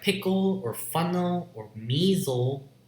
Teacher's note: In words like pickle, or funnel, or measle, you have syllabic L.